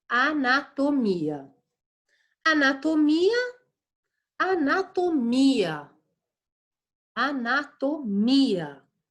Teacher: O mi é inclusive a sílaba tônica de anatomia.